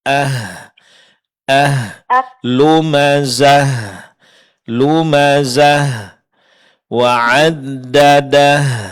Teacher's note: berhenti pada tamarbut ganti menjadi huruf ha sukun maka sifat hamas pada ha begitu sifat rahawah yaitu suara dilepaskan dan mengeluarkan angin